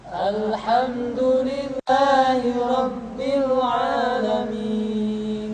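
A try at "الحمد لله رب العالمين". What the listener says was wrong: Jadi kita tidak boleh membaca Alhamdulillahi rabbil alamin. Ya, jadi ketika mengucapkan a di sana kepanjangan.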